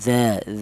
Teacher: berasal dari ujung lidah menyentuh ujung gigi sehari atas ya.